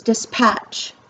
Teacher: i say patch harder than the dis so that is the stressed syllable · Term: stress syllable